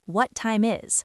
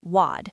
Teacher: The t in what might even be a flap t sound which is similar to a light d sound in American English